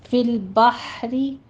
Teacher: ہا وسط حلق سے ادا کریں گے، یہاں پہ آپ نے حمس بھی لے کر آنا ہے، اور را باریک ہے